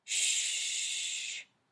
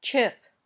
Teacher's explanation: say CH when you say sh there should be no movement when you say sh you can continue to make the sound for a long time sh when you say CH you can't the sound ends suddenly